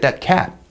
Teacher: your tongue just stays at the alveolar ridge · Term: unreleased stop